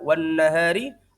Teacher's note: ada mad tabi'i untuk huruf ha karena ada alif huruf sebelumnya berfathah